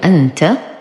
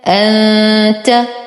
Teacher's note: ولو قرأنا أول كلمة في الدرس كلمة أنت، همزة فتحة نون سكون أن، تا فتحة ت، أنت. ألاحظ كيف أتيت بالهمزة وفورا أتيت بالنون الساكنة التي تليها